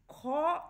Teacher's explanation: তোমরা যখনই খ উচ্চারণ করবে খ এই উচ্চারণের মধ্যেই পেয়ে যাবে ক যুক্ত হ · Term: মহাপ্রাণ ব্যঞ্জন